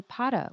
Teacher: You say para with the stress on the first syllable